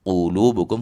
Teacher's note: huruf qof berbaris domah ditebalkan lu dibaca dua harakat.